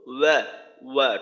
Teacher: একটা হলো ওয়াও জবর অ অ ধরনের না, ওয়া ওয়াও জবর ওয়া ওয়া, ঠোঁট একেবারে গোল করে ঠোঁটের থেকেই উচ্চারণটা করা